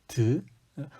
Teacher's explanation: 사이에 잇몸 앞에 가서 붙어 있습니다 공기가 앞으로 쭉 나오다가 이 혓 끝과 잇몸이 붙어서 공기의 흐름을 막아 버린 겁니다